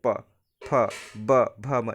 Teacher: सभी का क्या है दोनों होट जुड़ेंगे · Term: प वर्ग